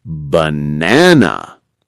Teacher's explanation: In banana, the strong beat is in the middle.